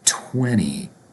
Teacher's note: So even though the number has a T, 20, we have two T's, the second T is going to be pronounced like an N